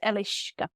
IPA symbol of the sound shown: ʃ